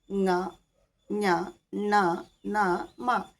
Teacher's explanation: അനുനാസികങ്ങൾ എന്ന് പറയുന്നു അപ്പോ ഈ അനുനാസികങ്ങളിൽ ങ്ങ ഞ ണ ന മ ഇതൊന്നും മൂക്ക് ഇല്ലാതെ മൂക്ക് അടച്ചു പിടിച്ചുകൊണ്ട് നമുക്ക് പറയാൻ പറ്റില്ല